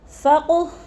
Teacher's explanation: فقو کی قاف کو بھی ہلا کر پڑھیں گے، حروف قلقلہ میں سے ہے